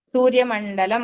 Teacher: అక్కడ వచ్చే డ ముందు వచ్చిన అనుస్వరం అణ కింద పలుకుతాము